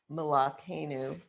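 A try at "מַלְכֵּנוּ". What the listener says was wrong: Malkenu. Yeah, if you want to do it right. Malkenu, right? It's a short vowel, so it ends the syllable.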